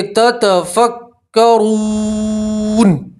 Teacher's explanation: نون کے اوپر آپ وقف کریں گے تو زبر کی جگہ آپ جزم پڑھیں گے